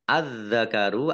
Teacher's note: alif lam samsiah karena tidak dibaca langsung masuk ke huruf berikutnya yaitu zal ditandai zalnya ada tasdidnya.